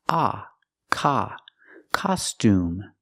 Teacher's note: Costume has a different pronunciation. The O has the open sound ah, like hot and stop.